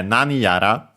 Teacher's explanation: actually accented just like nani on the first syllable.